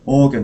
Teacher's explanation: Stressed at the beginning, isn't it?